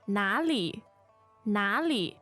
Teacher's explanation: the tones there are the third third and neutral